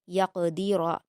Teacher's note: قاف کو پر پڑھیں گے اور را کو پر پڑھیں گے